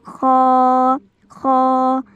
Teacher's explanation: आपका जो यह अदना हलक थोड़ा सा वाइब्रेट होता नजर आएगा क्योंकि यह अदना हलक से अदा होता है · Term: मोटा हर्फ